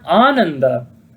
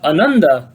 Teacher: the word Ananda with a long A means bliss or inner joy, while Ananda with a short A means unhappiness